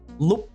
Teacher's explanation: your mouth kind of closes at the end of like the word lúc